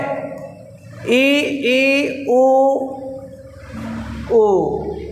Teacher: ई के उच्चारण में सबसे कम मुख खुलता है। ई उ इनके उच्चारण बहुत ही कम मुख खुलता है।